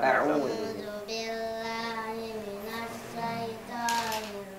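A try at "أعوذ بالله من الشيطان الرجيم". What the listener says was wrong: Baik, coba huruf shinnya dilatih lagi. A'udzu billahi minasyaitonir rajim.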